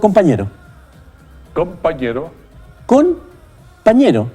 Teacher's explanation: Sí. Pero como la P y la B son sonidos bilabiales, donde se une el labio superior con el inferior, la N se transforma en M